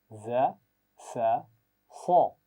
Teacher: زا، سین اور صاد کی آوازیں سیٹی کے ساتھ پڑھی جاتی ہیں